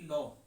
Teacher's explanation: लो कहेंगे तो हवा कहाँ से निकलती है? किनारों से निकलती है, यानी बगल से निकल जाती है लो बोलने पर। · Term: पार्श्विक व्यंजन